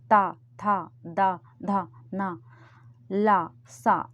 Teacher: जीभ का सबसे वाला आगे वाला हिस्सा है, वो दांतों के पास जाके दांतों के पास में टच हो रहा है, इसलिए ये दंत हैं।